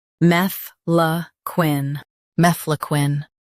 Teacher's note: Stress mef and soften quine.